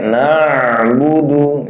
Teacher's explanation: Nah, dan dia sifatnya salah satunya itu apa? Tawassut, tengah-tengah antara syiddah dan rokhawah, masih jalan sedikit satu harokat jalannya.